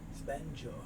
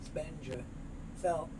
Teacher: So the D moves over, spend your. The F moves over, spend your self, and the N moves over, spend yourself in a hole.